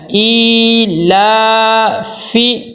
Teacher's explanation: آگے دیکھیں حمزہ کے نیچے کھڑی زیر ہے، ایک الف کے برابر لمبا کرنا ہے. آگے لام کے اوپر پھر کھڑی زبر ہے، اس کو بھی ایک الف کے برابر لمبا کرنا ہے